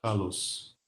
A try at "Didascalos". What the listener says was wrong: Por que você está fechando o O? Didascalos.